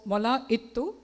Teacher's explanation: you have a high fall, and then you have a rising, which gets you into the story